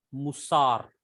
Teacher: shurek is a long vowel, and it gives a long u sound in musar